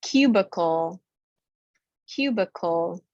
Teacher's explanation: that i takes the schwa sound